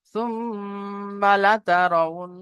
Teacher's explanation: নুনের উপরে তাজদিদ এসেছে, নুন মুশাদ্দাদ গুন্না ওয়াজিব।